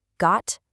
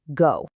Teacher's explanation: It can say its name, turning into the word go with that long, stretched out O sound